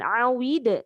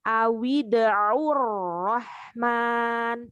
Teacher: hati-hati pada huruf hamzah. Huruf hamzah jangan seperti ain. Jadi bukan awid, tetapi awida'ur rahman.